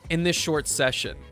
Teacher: I just completely omit the S from this, and it just goes fine.